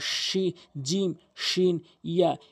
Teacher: এরপরে জিম, শিন, ইয়া, এই তিনটি হরফ জিহ্বার মাঝখান উপরে তালুর সঙ্গে